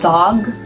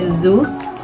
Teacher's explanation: For the fourth one, we have alveolar, produced with the tongue against the ridge just behind the upper teeth.